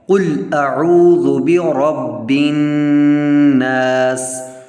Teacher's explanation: سب سے پہلے ہم نے قل کو خوب موٹا کر کے پڑھنا ہے کیونکہ یہ موٹا قاف ہے